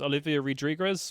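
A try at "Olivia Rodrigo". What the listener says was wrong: No, Rodrigo. Not Rodriguez. You Hispanified her last name even more. Rodrigo. Like the man name, yeah, male name.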